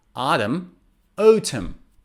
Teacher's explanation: in both accents the last and the final n is not pronounced it's silent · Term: silent n, Silent N